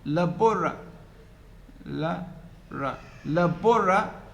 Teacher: The vowel in the third syllable, which is also a, also has reduced to schwa.